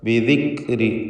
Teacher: ബിദിക്രി മഹ്മൂസായ ഹംസ് നൽകേണ്ട അക്ഷരമാണ് കാഫ്.